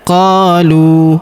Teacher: huruf qa kita panjangkan 2 harokat karena terdapat alif di depannya